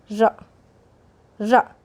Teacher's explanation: जिन व्यंजनों के उच्चारण में जिह्वा को 2-3 बार कंपन करना पड़ता है उन्हें प्रकंपित कहते हैं। जैसे र, जीभ को 2-3 बार कंपित होना पड़ रहा है।